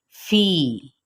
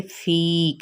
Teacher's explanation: या मद्दा यहाँ पर हो रही है और इसको एक अलिफ या फिर 2 हरकत के बराबर खींचेंगे। इसको फ़ी नहीं कहेंगे, फ़ी कहेंगे, थोड़ा सा खींचेंगे।